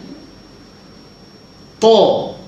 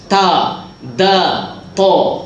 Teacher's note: Tempat huruf yang sama, belakang gigi atas.